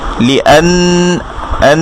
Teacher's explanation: এবার এখানে দেখি যে লামের নিচে হচ্ছে কাসর দেয়া, তাহলে হবে লি, আলিফের সাথে ফাতহা দেয়া আ, লি আ, এই আটা গিয়ে নুনকে ধরেছে আন, লি আন, নুনে তাসদিদ কিন্তু গুন্না হবে, লি আন, আন, কিছুক্ষণ নাকে থাকবে এবং নুনের উপর ফাতহা দেয়া না, লি আন্না, লি আন্না।